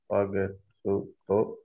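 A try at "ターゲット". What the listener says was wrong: Well, this is actually a small chip, so it becomes a glottal stop. So, tagetto.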